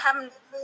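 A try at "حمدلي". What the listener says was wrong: Hamdili. Hamdili bukan hamdali. Hamdili, hamdi kasrah. Karena diambilnya dari fi'il mudhor ya. Jadi dalnya kasrah bukan fathah ya.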